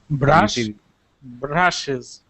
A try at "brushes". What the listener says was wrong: that's better yeah your R was rolling a little bit